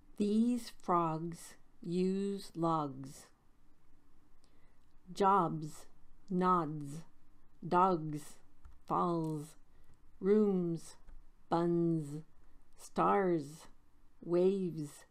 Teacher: the s sound after some vowels fill this bus with gas s equals z after voiced consonants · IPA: /z/